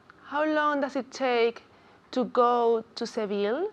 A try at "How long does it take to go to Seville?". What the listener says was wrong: Muy bien. Bien pronunciado.